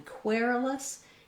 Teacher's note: in query-less it's the air diphthong so i would build from that starting with air